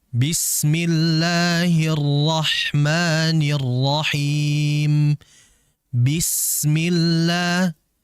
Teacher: Bismillah, sinnya agar mengalir terlebih dahulu, ya, sehingga tidak terlalu cepat. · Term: rikhawah